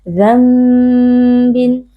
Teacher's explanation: iqlab ini harus dibaca dengan gunah mthawalah atau dengan didengungkan jadi dengungnya harus dipanjang sedikit